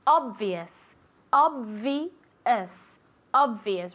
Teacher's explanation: word is obio okay obio very good obvious obvious obvious remember with that V sound so you have to move your vocal chords